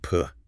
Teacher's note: Just practice saying p feeling that puff of air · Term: p sound